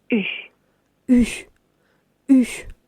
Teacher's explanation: les deux lèvres en dehors, les approchant aussi l'une de l'autre sans les rejoindre